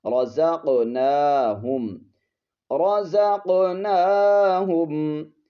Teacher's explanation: यहाँ पर कौफ पर कलकला करेंगे